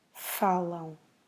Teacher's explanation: the stress is on the first syllable and then we make a nasal sound at the end